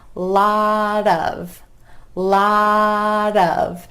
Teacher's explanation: that final T is turning into a flap t or d d sound because it's between two vowels lot